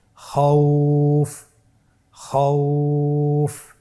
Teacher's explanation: পরবর্তী হরফ খ ওয়া জবর খও ফা দুই পেশ ফুন খওফুন। এখন আমরা যদি লিনের হরফের বামের হরফটির উপর ওয়াকফ করি তাহলে আমাদেরকে এক আলিফ টেনে পড়তে হবে